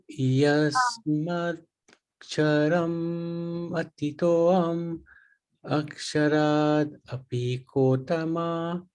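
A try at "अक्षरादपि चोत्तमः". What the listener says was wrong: Chotama. understand the English can be confusing. The C.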